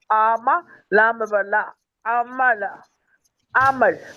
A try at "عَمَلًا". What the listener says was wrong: ٹھیک ہے، آپ تھوڑی سی آئین کو لمبا کریے. آما نہیں، آما، آما، لام زبر لا، عملا، عمل. ٹھیک ہے، عمل.